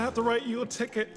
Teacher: Have to becomes have to, and both words write and ticket have a stop T at the end.